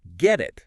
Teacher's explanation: the T at the end of get and the I at the beginning of it, they kind of blend together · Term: connected speech